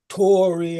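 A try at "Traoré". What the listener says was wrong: It is T-R-A-O-R-E. Tra-Ori. Not Tory.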